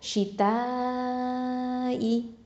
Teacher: அப்போது கண்டிப்பாக நம்ம வந்து என்ன பண்ணணும், இதை வந்து நீட்டி ஓதணும். அதாவது 4 இல்லைன்னா 5 ஹரக்கத்தளவுக்கு நீட்டி ஓதணும் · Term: மத்தல் வாஜிபல் முத்தசில்